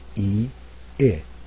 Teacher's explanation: The second vowel is different from the first one in a few different ways, but the most important thing is your jaw has to drop down just a little bit. So when I say the first vowel, E, and then I say the second vowel, I, my jaw is a little bit lower for I.